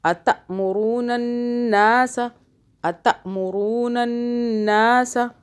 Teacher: الف پہ جھٹکا آئے گا کیونکہ اس الف کے اوپر جزم ہے۔